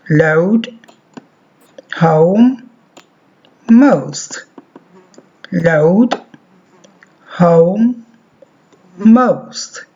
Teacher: as the tongue moves a closer to the roof of the mouth there is at the same time a rounding movement of the lips this movement is not a large one again because the second